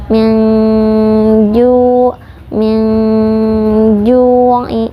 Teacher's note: Ju, kita menyamarkan nun sukun, mempersiapkan makhraj huruf ja. Huruf ja makhrajnya yaitu tengah lidah menempel pada langit-langit.